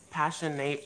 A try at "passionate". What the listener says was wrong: No, you said passion 8. Yeah, but you don't say it like that. You say passionate.